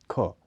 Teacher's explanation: ख, इसका उच्चारण स्थान क के नजदीक माना जाता है। यह भी अघोष ध्वनि है, लेकिन यह महाप्राण स्पर्श ध्वनि है।